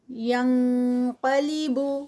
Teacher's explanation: آگے اخفا ہے اور اخفا ہیوی ہوگا کیونکہ آگے قاف آ رہا ہے